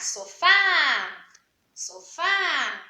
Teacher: A gente sabe então que a sílaba mais forte é o Fá. Nós pronunciamos mais forte, a gente não fala sofá, por exemplo.